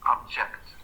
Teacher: it starts low then it goes up